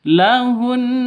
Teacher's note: cara berhentinya harus ditahan satu alif dua harakat ya. lahun. Nah, ditahan dua ketu dua ketukan khairul lahun seperti itu. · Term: Ghunah musyaddadah